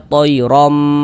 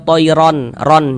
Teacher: Kemudian didengungkan atau digunahkan ya. Jadi bagian romnya itu, suaranya itu kita tahan ya, kita panjangkan sejenak. Toirom, nah, kita dengungkan, kita gunakan rom.